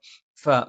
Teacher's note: മേലെ മുൻപല്ലിന്റെ താഴ്ഭാഗം താഴെചുണ്ടിന്റെ പള്ളയിലാണ്